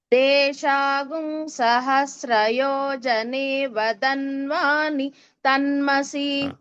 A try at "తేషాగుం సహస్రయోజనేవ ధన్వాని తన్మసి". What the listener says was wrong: ధన్వానిలో ధ మహాప్రాణం అది గమనించి మళ్ళీ చెప్పండి.